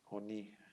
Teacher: se va a pronunciar como una o brevísima